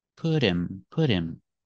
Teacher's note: the T sounds like a fast D because it's between vowels